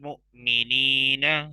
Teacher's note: हमजा साकिन पे झटका होता है